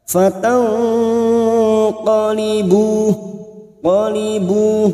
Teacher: Rikum fatang, nun sukun bertemu qaf, ikfa hakiki. Kita samarkan bunyi nun sukun dan mendengung selama 2 atau 3 harakat.